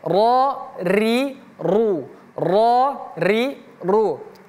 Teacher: Kalau huruf ro kalau dia fathah a ataupun dhammah u, maka dia tebal. Kalau dia kasrah i tipis.